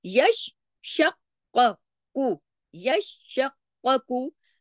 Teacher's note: काफ की आवाज दो दफा आनी चाहिए, शीन की दो दफा , क्योंकि इन दोनों हर्फ के ऊपर तशदीद है, यश शक्कू,